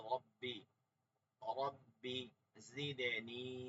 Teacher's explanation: রব্বিতে কখনো টান দিব না ঠিক আছে রব্বি এখানে শুধু র বাজব রব বাজের বি রব্বি